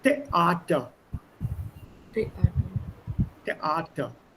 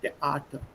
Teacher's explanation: Two vowels coming together, especially the E and the A, give a break. छोटा सा break देना.